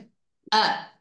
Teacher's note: হলকের শুরু হইতে হামজা হা উচ্চারণ করতে হয়। হলক মানে গলা, কণ্ঠনালীর শুরু থেকে, এই যে কণ্ঠনালী হচ্ছে এই যে এখান থেকে শুরু হয়েছে, এই যে এই জায়গাটা, এই যে গলাটা শুরু হয়েছে না, একটা ছোট্ট একটা গর্তের মতো আছে, এখান থেকে আমরা হামজাটা উচ্চারণ করব, লাইক আ।